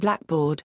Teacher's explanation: The compound blackboard, on the other hand, though it may have started out historically as black board, now is stressed on only the first element, black.